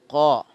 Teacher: നാവിൻ മുരടും മേലെ അണ്ണാക്കും ചേർത്ത് പറഞ്ഞാൽ കാഫായി